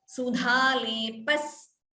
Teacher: Sudha lepas extra s is heard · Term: Dvitvam